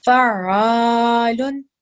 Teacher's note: this is ayn and not hamza, we're supposed to make sure that we don't produce a jerking sound.